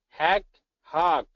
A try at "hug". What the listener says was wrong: Hug. Hug. Because at first it sounded like somewhere between hug and hag. So I want you to do a little bit more of an hug.